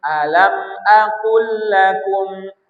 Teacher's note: Maka lam pertama dimasukkan ke lam kedua. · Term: idgham mutama silain